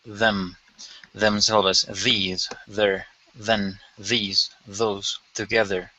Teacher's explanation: okay d these sounds are commonly used in function words remember this sound is voiced meaning the vocal folds vibrate a little